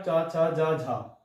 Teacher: ये चा वाली लाइन भी देख सकते हैं आप, चा छा जा झा, ये वाली जो लाइन है वो स्पर्श संघर्षी की है